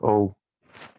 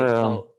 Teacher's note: to distinguish open O and closed O for some of you, closed O has a slight U